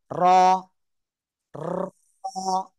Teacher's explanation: জিব্বার আগার পিঠ, দেখেন দেখেন, উপরে তালুর সাথে লাগিয়ে মোটা আওয়াজে পড়তে হবে